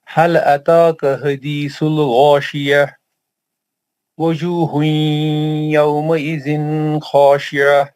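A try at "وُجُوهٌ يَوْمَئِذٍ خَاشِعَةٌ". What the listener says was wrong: آپ ازا کو لمبا نہیں کرنا. یومئذ خاشعہ, آپ غنہ نہیں کرنا تھوڑا بھی.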